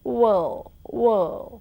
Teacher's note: In pronunciation, it gives you world. And then you say L and D. You don't pronounce R at all.